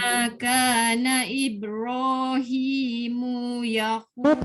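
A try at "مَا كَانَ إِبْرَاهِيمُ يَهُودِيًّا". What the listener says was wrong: Mu tak boleh panjang. Mu tak boleh. Ma kana Ibrahimu Yahu. Jangan mu tak boleh.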